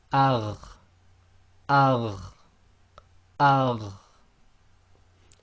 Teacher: The top of the throat then is the letter kha and ghain. So we've got them in red here because they are the heavier letters.